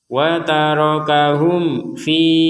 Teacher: mim mati lagi bertemu fa, kita baca jelas.